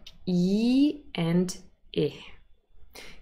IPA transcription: i: